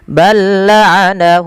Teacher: ada kita namakan dengan Idgham mutamasilain ya mutamilain yang di mana huruf lam yang pertama dimasukkan ke huruf yang kedua Tapi tidak ditahan